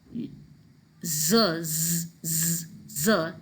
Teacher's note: so your vocal chords vibrate and you know that it's a voiced consonant